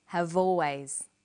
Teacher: in conversation we link the final consonant sound V with the initial vow sound o have always crocodiles are crocodiles